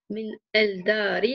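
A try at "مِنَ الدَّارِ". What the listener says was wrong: shamsiya, donc tu diras bien, non, tu diras bien minadari, sans prononcer le lam, Non, on prononce pas le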